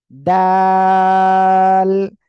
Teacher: এই অক্ষরটা হলো দাল। জিহ্বার আগায় এই দুই দাঁতের, সামনের উপরের দুই দাঁতের গোড়ার সঙ্গে লাগিয়ে উচ্চারণ হবে আর তিন আলিফ টেনে পড়বেন।